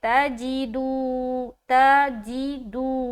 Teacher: دو میں واو مدہ کر رہے اس لیے ہم اس کو لمبا کر رہے